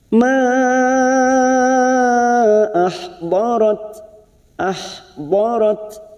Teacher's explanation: ada Mad yang bertemu dengan Hamzah di lain kalimat namanya Mad Jaiz munfasil lima harakat kita panjangkan